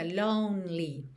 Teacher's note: Esse E no meio da palavra lonely não é pronunciado, então fica lonely, tá? Do N, você já vai direto pro L.